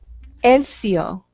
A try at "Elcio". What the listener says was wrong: Yes, yes, you pronounce it without H, Elcio.